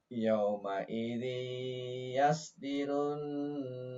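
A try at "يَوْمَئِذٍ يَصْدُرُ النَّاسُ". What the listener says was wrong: Tapi bukan dirun, tapi zu. Yauma idzi yasdurun, bukan yasdirun, bukan, tapi yasdurun.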